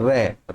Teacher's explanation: अगला, लुंठित ध्वनियां क्या होती हैं, जिन ध्वनि के उच्चारण में जीवा का अगला भाग मुड़कर वत्सर्य को टच करता है या मूर्धन्य को टच करता है, मुड़कर, घूमकर, जैसे कि लुंठित की बात करें, रे, रे में जीव आगे से मुड़ जाती है